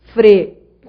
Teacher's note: Você foi da semivogal U para a vogal E. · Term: Ditongo crescente